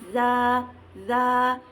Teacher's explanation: rikhwah atau lunak, aliran huruf berlanjut